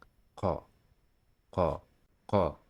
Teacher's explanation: The pronunciation of this letter does not occur in English. The letter Qaf is like the English K, but it is produced deeper in the throat at the back of the tongue.